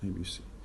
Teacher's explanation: we say it ABC as if it were a single word, without any pause and between the sounds and the letters. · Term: one continuous sound